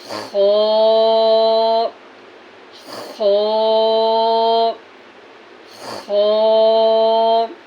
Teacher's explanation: अदनाए हलक यानी मुंह की तरफ वाला जो हिस्सा है वहाँ से खो अदा होता है।